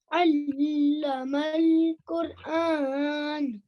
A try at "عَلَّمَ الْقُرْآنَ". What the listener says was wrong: Okay, there's still I wouldn't be able to differentiate the alif and ayn sound from how you're saying it, but just practice. So alif and ayn, You see, alif is not from your throat, ayn is.